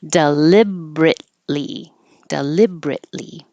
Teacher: It's the E we just don't say.